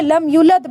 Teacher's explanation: کو پڑھ رہے ہیں جلدی میں لم یولد پڑھ رہے ہیں، واو کو بیچ میں چھوڑ ہی دیا ہم نے